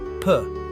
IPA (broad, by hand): p